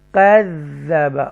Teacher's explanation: یہ ذال مشدہ ہے کیونکہ اس کے اندر تشدید آ رہی ہے اور یہ ٹوائس ٹائم پڑھا جاتا ہے. کذب اور ایکسٹرا سٹریس کے ساتھ.